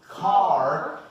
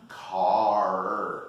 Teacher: this letter r for example in the word car is retroflex you swallow your Tong car in American English okay and this